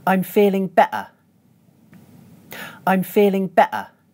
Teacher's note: As you can hear, I’m using a glottal stop in the middle of the word ‘better’.